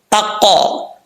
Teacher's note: یہ جو قا کی آواز آ رہی ہے قلقلہ ہے.